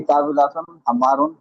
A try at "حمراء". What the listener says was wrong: حمر نہیں ہے نا، آپ دیکھو حمراء. حمرا نہیں حمراء.